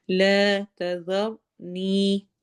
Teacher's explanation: یا مدہ ہو رہا ہے، یعنی یا پہ ہم نے دو حرف کا لمبا کرنا ہے۔